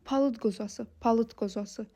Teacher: birinci söz d ilə bitib, özündən sonra da samitlə başlayan söz gəlib. Deməli, d t-yə çevriləcək